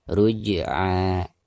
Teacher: Ruj'a, ruj, jim sukun ya, sekaligus posisinya ada di tengah-tengah bacaan, maka dihukumi qalqalah sugro dan cara membacanya harus dipantulkan dengan suara pantulan yang tipis